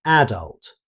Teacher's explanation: In British English, the stress is commonly placed on the first syllable, making it sound like adult.